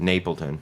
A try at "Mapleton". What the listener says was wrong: No, Mapleton. With an M. Mapleton.